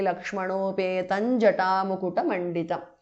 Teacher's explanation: Now Janaki Lakshmanopetam ends in Anuswara followed by Ja, so it becomes Janaki Lakshmanopetam Jata Mukuta Manditam. Anuswara changes to Nya.